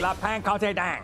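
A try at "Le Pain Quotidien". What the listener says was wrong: It's pan. There, you don't pronounce the N.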